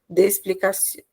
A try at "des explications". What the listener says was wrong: Très bien. Parfait.